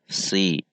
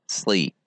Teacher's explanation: Si, kemudian naikkan pangkal lidahnya. Karena perbedaan huruf sin dan huruf shad adalah ada pada pangkal lidah saja, yaitu sin istifal atau pangkal lidah turun dan huruf shad pangkal lidah naik